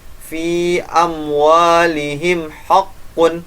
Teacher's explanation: Nah, di sini ada mim sukun bertemu dengan waw. Ingat, mim sukun bertemu dengan waw. Yang penting bukan ba dan mim. Jadi dibaca jelas karena izhar syafawi.